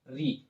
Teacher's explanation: तो री मूर्धा से बोला जाएगा